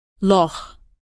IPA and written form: lɒx (Loch)